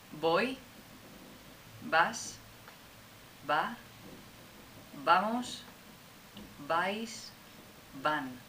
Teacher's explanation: But of course in Spanish, as you know, the pronunciation is no different between the B and the V.